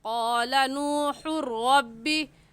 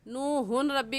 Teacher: इस रा को हम हा के साथ मिलाएंगे और ऐसे कहेंगे क़ाला नूहुर रब्बी।